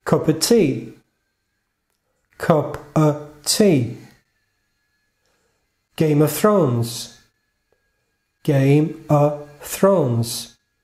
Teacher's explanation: Of se torna a. O F desaparece.